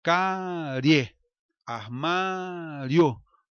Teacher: Note que o I é uma semivogal e o E, O são vogais, então o som cresce, se eleva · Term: ditongo crescente